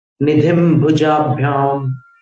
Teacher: निधिम के अनुस्वार को भुजाभ्याम में मिलाओगे तो फिर वो म जैसा ही रहेगा